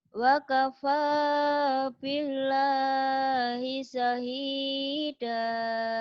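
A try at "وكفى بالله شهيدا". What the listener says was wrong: Shinnya gede syahida. Ayo lagi. Wakafa billahi syahida.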